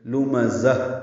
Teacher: ہمزہ تل لمزہ، لام میم زا، لام میم جلدی پڑھیں گے، زا کو وقفاً تائے مربوطہ سے ملا دیں گے، یہ ہا میں تبدیل ہو جائے گی۔ لمزہ، ہا کی آواز نکالیں گے، آخر میں سانس جاری رہے گی، اس کو ہمز کہتے ہیں۔